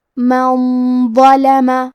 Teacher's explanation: وہ حروف الاخفاء میں سے ہے اور اخفاء کا معنی ہے چھپا دینا، تو ہم نون ساکن کو چھپاتے ہوئے اور غنہ کے ساتھ یہ حکم کو ادا کریں گے